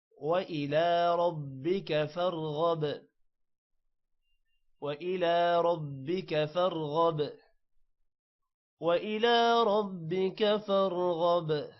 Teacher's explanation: با 2 بار پڑھا جائے گا، ایک بار را کے ساتھ اور ایک دفعہ اکیلے میں. رَبِّكَ فَارْغَب را موٹا ہوگا، غین بھی موٹا ہوگا اور با پر قلقلہ ہوگا.